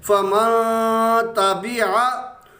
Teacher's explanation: آگے ہے فمن تابعہ، یہاں نون ساکن کے بعد تا ہے تو تا حروف اخفا میں سے ہے، یہاں نون ساکن پر غنہ کریں گے کیونکہ نون ساکن کے بعد حروف اخفا میں سے تا آ گیا